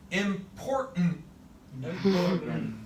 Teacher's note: I want to drop those T's right on out of there.